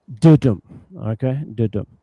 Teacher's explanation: a two-syllable word with the stress on the first syllable